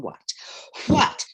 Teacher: do not pronounce the h in what